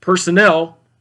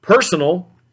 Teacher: personnel, with the accent on the third syllable, and then personal has the accent on the first syllable